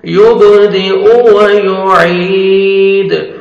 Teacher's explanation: आइन को अपने सही मखरज से अदा करेंगे और 1 सेकंड आइन को खींचेंगे।